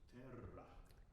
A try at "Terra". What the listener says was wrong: I know you've got a W of R, but not at the expense of shortening the vowel. Terra. You can do both.